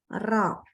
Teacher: inhiraf itu berarti kita baca ro itu lidahnya tuh agak miring sehingga dia keluar suaranya